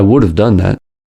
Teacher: The D in would becomes a flap T.